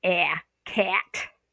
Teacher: Not in General American English. The short a is actually eh.